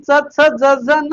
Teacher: वरच्या दाताच्या अजून थोडं मागे जीभ जात तिथे टाळू आहे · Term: तालव्य